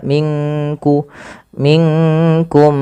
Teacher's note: Melafal minkum samarkan nunnya ke kaf